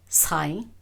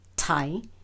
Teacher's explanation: And both are in the low tone.